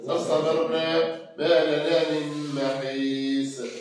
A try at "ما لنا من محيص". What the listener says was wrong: لا أي محيص. ما لنا من محيص. فخم الصاد.